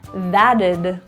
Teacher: The T surrounded by two vowels will turn to a flap T it sounds like a d